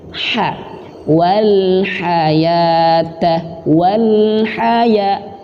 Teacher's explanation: memiliki sifat hamas juga, mengalirnya nafas atau angin, dan makhrajnya tempat keluarnya terletak di tenggorokan bagian tengah, bukan bagian pangkal.